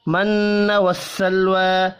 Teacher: نون مشدد پر غنہ کریں گے, لام ساکن پر قلقلہ نہیں کرنا.